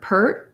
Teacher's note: first we have pert without releasing that t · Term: stop t